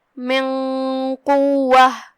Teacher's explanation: تو ہم نون کو بغیر ظاہر کیے ہوئے چھپاتے ہوئے لیکن غنہ کے ساتھ یہ حکم کو ادا کریں گے۔ دھیان رہے یہاں غنہ تفخیم سے ہوگا کیونکہ قاف حروف تفخیم میں سے ہے، جو کہ غنہ اپنے اگلے والے حرف کا حکم لیتا ہے تفخیما و ترقیقا، تو ہم تفخیم سے یہ غنہ کو ادا کریں گے۔ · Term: اخفاء